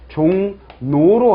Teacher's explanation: 리을이 없어요. 리을이 없고 뭐로 바뀌었습니까? 리을이 니은으로 바뀌었습니다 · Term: 비음화 현상